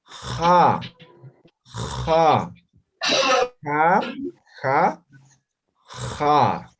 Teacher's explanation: Pronunciamos como la J más o menos, pero fricativa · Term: letra X